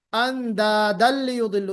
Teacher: उसको तनवीन को मर्ज कर दिया लाम में